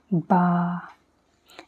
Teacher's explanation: तो जब लगाते तो पूरे होंठ को किस तरीके से मिलाते हैं, उसी तरीके से आप लोगों को मिलाना है। होंठ को पूरे, एक होंठ को दूसरे होंठ के ऊपर पूरा चढ़ाना है, मिलाना है